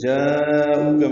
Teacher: جاءوک میں الف مدہ کے بعد حمزہ آنے کی وجہ سے مد متصل ہے، او واو مدہ ہے، کاف باریک ہے.